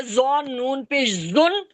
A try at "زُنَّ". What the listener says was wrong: یا ین نہیں ہے، یا زبر یا پڑا تھا نا.